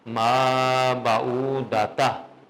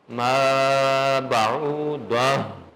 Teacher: گول تا کو گول ہا میں چینج کر دیں گے جب آپ وقف کریں گے، اور اینڈ پہ اس کی ساؤنڈ بھی آئے گی